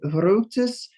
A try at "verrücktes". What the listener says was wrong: Verrücktes. You're still sounding it like a V. It's a F. Verrücktes.